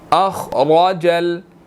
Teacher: خا بھی موٹا ہے، را بھی موٹا ہے، دونوں کو ہم نے موٹا کر کے ادا کرنا ہے